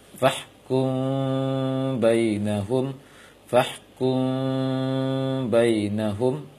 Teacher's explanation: Sebagai contoh, fahkum bainahum, karena mim sukun direnggangkan bibir sedikit ketika bertemu dengan ba, tidak dirapatkan total.